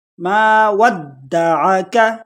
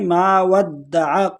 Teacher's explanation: ما ودعک، کاف کو باریک پڑھیں گے۔ اکثر لوگ مسٹیک کرتے ہیں، اس کاف کو موٹا کر کے پڑھ لیتے ہیں، جو کہ بڑی مسٹیک ہے، اس کو باریک پڑھیں گے۔ ما ودعک، اکثر لوگ اس کو پڑھتے ہیں ما ودعق، قو نہیں ہے، کا ہے، کا۔